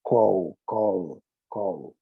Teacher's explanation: O L é falado na garganta. Então, quando eu acrescento a partícula ed para caracterizar o passado e o particípio, called, só acrescenta o D.